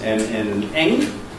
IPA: m, n and ŋ